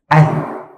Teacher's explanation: Kalau saya sebut ad, seolah-olah suara tertahan dan angin pun tertahan. Ad. Tak apa keluar.